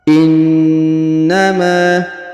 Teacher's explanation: perhatikan huruf na ditahan dan ditekan kurang lebih 2 sampai 3 harokat, karena di sini terdapat tanda tasdid, ya.